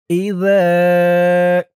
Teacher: যা, আর জালের উচ্চারণটা নরম হবে। জিহ্বার মাথা উপরের দাঁতের মাথার সাথে লাগবে জালের উচ্চারণটা করার সময়।